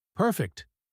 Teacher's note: just one word, but stretched slightly, warm, satisfied, a small sound of contentment that somehow carries an entire feeling in a single syllable.